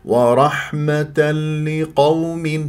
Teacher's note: والقاف في لقوم مفخمه مرتبه ثانيه مفتوحه · هذا غلط لانه صارت رخاوه والرخاوه ليست من صفات اللام البينيه من صفات اللام يعني الصحيح ورحمه لقوم هذو بس والقاف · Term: اللام المشدده